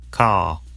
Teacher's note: in car the vowel sound is lengthened in place of the R sound